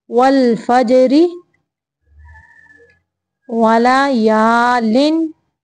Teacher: अगर मिलाना है तो फिर रा को बारीक पढ़ेंगे क्योंकि रा के नीचे ज़ेर है